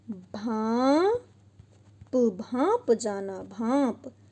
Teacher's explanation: यानी यहाँ नाक और मुंह दोनों से आवाज निकल रही है, इसलिए यहाँ अनुनासिक है